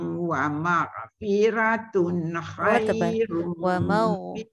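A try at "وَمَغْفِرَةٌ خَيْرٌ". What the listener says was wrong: wa ma'firatun ra tafkhim tun tun tak dengar wa ma'firatun ra tafkhim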